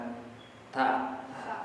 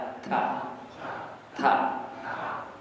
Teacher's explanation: ujung lidah kita sentuhkan di gusi gusi itu daging gigi atas